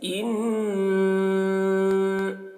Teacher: تھوڑی دیر تک آواز کو گنگنائیں گے ، جیسے ان، ایسے اس کو غنہ کہتے ہیں۔ ان الذین،